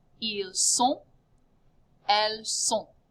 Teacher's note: You end with that nasal ho sound. Do not pronounce the T.